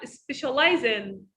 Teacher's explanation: We have here linking z sound and n sound, specialize in.